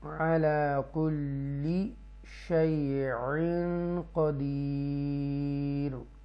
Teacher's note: یہاں پر اکفا کریں گے، تنوین کے بعد قاف ہے اس لیے گنہ کریں گے